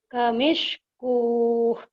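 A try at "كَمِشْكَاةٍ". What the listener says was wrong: wawnya nggak dibaca.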